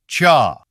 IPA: tʃa